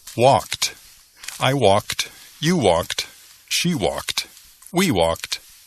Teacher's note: Es como si hay una T al fin en lugar de ed.